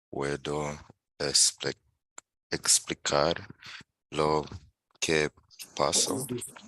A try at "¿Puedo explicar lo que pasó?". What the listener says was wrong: ¿Puedo explicar lo que pasó? So you have to stress the O there because it has an accent on it. But you're asking him to explain, right? So it's not puedo.